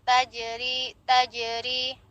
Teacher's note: Tajri, di depannya ada huruf jim, berlaku qalqalah sughroh karena di tengah kalimat · Kemudian di depannya ro tarkik ya, tipis karena dia kasroh